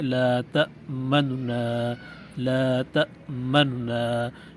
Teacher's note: دو نونوں سے پڑھیں لیکن پہلے نون کی پیش کو جلدی سے پڑھیں، اور اس کا طریقہ یہ ہے لا تمنا لا تمنا، یعنی نون کی پیش کو آپ نے پڑھا لیکن اس کو جلدی کے ساتھ پڑھا، اس کی پیش کو مکمل نہیں پڑھا۔